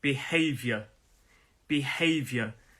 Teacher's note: There are 3 syllables in this word. Behavior. Behavior. And the stress is on that second syllable, that hey. Behavior.